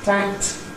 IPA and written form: tækt (Tact)